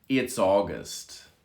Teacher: You can see the S connects to the A in August.